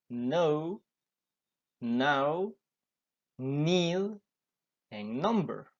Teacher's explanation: it is made through the nose rather than the mouth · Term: n sound